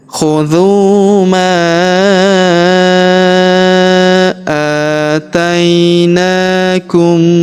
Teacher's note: huruf ma kita panjangkan 4 atau 5 harokat, karena di depan huruf ma terdapat alif yang di atasnya terdapat tanda garis bacaan panjang.